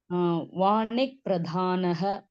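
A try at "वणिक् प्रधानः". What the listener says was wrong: Vanik. No, don't make it Va. You're reading it like Dirga. Vanik.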